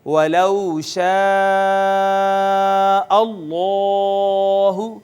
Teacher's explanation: جلالت اللہ کا ما قبل مفتوح تھا لہٰذا اس کو ہم نے پر کر کے پڑھا ہے · واو کا ما قبل مفتوح ہے لہٰذا یہ واو مدہ نہیں بلکہ واو لین